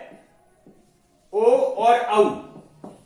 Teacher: ओ दौ तो हो कंठोष्ठम, अर्थात ओ और औ का कंठ और ओष्ठ होता है। कंठ और ओष्ठ, इनका उच्चारण स्थान कंठोष्ठ होता है।